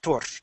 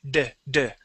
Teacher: R, when you roll that R, that's the same position you want your tongue in when you pronounce the D in English.